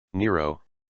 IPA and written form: ˈnɪəroʊ (Nero)